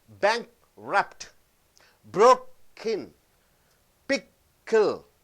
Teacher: So the K stops. K as a glottal stop in the middle of the word.